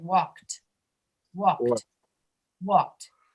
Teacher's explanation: you will not pronounce the E, and the D will sound like a T